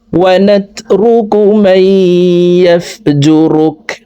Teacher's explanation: মাই এখানে দগমে বা গুন্নাহ, নুন সেকেন্ডের পরে এই দগমে বা গুন্নার 4 হরফের একটি হরফ ইয়া আসছে, এই কারণে এই জবরওয়ালা মিমটি তাসদিদওয়ালা ইয়ার সাথে গুন্নার সহিত মিলে ইয়া পড়ব, মাঝখানে জজমওয়ালা নুন বাদ পড়ে যাবে